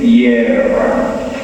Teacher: en primer lugar hay la R fuerte, la T es también consonante fuerte